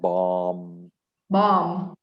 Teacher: we dropped the last b bomb yeah there's no b sound bomb bomb there's